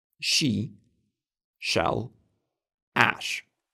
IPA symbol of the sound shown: ʃ